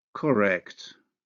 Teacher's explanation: the alveolar nasal becomes velar when followed by the velar consonant, K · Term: nasal assimilation